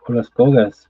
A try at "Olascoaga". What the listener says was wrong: Well, without the S, Olascoaga.